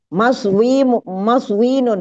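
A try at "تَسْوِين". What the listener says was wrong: bukan mim tapi ta depannya masdar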